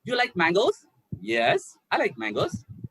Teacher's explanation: so a rising tone and falling down